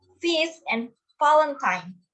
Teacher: labiodentals, formed with the bottom lip and top teeth